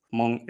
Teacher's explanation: when an H is put before nasals, like in the name of the language itself, Hmong, it's a sort of devoiced nasal sound. If you've learned Icelandic or Welsh, you might be familiar with what that sounds like.